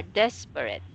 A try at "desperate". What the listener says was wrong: Like this, not rate, red.